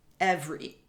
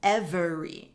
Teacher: i'm essentially eliminating the e in the second half of that word